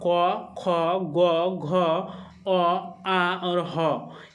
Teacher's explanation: कंठ से जो उच्चारण होता है वो आपका क, ख, ग, घ, अ, आ और ह, ये जो आपके 7 आपके वर्ण है दोस्तों, ये 7 वर्ण जो है आपके कंठ से उच्चारण होते हैं।